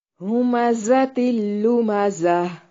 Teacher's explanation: زا کو زور سے سیٹی کے ساتھ ادا کرنا ہے